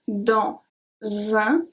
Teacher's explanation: the S from dans is going to be transferred to un, dans un, make the Z sound